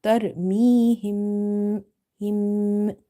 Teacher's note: You have to do nasalization basically. You have to do the gunna in this mim sound.